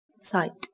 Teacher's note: từ này kết thúc bằng âm T là một phụ âm vô thanh. Các bạn chú ý bật rõ ràng nhé.